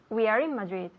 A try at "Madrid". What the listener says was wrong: Yeah, Madrid. You know, in English we have to pronounce those D's. Madrid. So I have the D with my tongue touching the roof of my mouth behind my teeth. Madrid. Madrid.